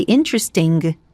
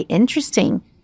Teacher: Of course, we teach students that you don't pronounce in the NG, the sound, which is very nasal, you don't pronounce the G